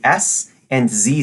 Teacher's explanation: the two as whether or not you use your vocal cords touch your throat and make the s and Z sound and you should feel your throat buzz for Z but not for s